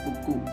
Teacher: Namun, perubahan nada dapat memberikan nuansa yang berbeda. Buku dengan nada naik pada akhir kalimat ini bisa menjadi sebuah pertanyaan, seolah-olah bertanya, apa itu buku?